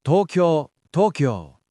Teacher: It's one quick syllable, not ki, ya. It's kya, like Tokyo, not Tokyo, it's Tokyo.